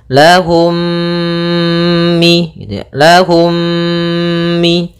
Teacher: dengan mim yang serupa maka itu kita namakan dengan Idam Mimi cara membacanya mim yang pertama dimasukkan kepada mim kedua dan ditahan gunahnya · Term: idgham mimi